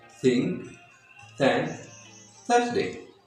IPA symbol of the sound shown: θ